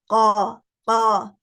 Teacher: زبان کی جڑ سافٹ پیلیٹ سے ٹچ کر رہی ہے, ٹھیک ہے, یہ مخرج ہے قاف کا.